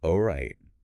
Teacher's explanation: slowly, softly, and the pitch kind of drops at the end.